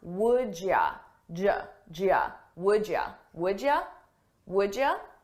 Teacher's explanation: You becomes ya, and I combine those sounds.